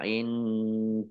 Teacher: nun sukun bertemu dengan huruf dal, bacaan ikhfa, dibaca samar-samar